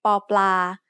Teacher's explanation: the sound of PA as an initial consonant is B which is in the middle between a regular English B and P we can also call this an unaspirated p